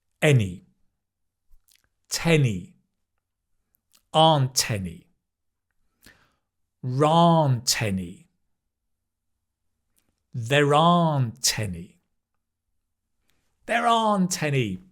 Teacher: And you can link the T and the A.